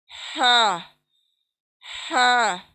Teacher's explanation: देखें जरा, हवा खराश, बीच के हलक से खराश आएगी, वहां से निकलने वाला है ये हर्फ हा।